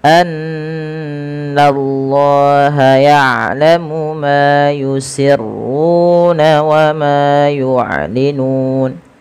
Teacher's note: Setiap kita mendapati adanya nun berharakat tasydid, kita tahan dulu suara bunyinya sepanjang 2 harakat karena ia kita namakan dengan bacaan gunnah. Kemudian lafal Allah bila didahului dengan fathah maka dia ditebalkan, tapi nanya tetap tipis. Annallaha, nallah, na baru Allah.